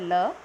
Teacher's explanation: पार्श्विक जिसमें अगल बगल से आपकी हवा बाहर निकले उसको क्या बोलते हैं पार्श्विक व्यंजन कहा जाता है तो इनको